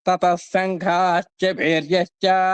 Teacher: తతస్ అంటే సకారంగా మారిపోయిందన్నమాట